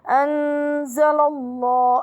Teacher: اللام في لفظ الجلالة مفخمة لأن ما قبلها مفتوح، بها مد طبيعي.